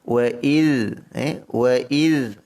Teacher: Pertama, wa iz, huruf zal ini tidak ada sifat qalqalah, jangan didetapkan ataupun jangan ada detapan, diletakkan sahaja